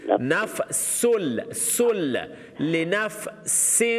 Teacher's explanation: سین کے اوپر تنوین ہے, اس کے بعد لام ادغام بغیر الغنہ ہے